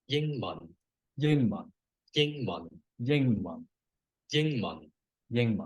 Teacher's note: ying is a high tone and mun is a low tone.